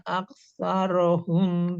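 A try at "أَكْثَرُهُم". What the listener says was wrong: Aksaruhum, runya kurang jelas Bu. Aksaruhum.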